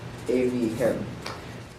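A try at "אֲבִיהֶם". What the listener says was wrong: Evihim. And watch your segols that you don't make them all like Sares.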